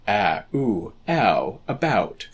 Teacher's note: A diphthong is a sound that starts with one vowel sound and transitions into another vowel sound. Ow, for example, starts with the sound a and ends with the sound oo.